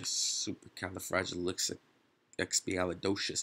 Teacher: where's the emphasis exactly on the dough